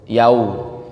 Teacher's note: Jadi itu ada huruf wawu ya, yau, yaitu harus dimonyongkan.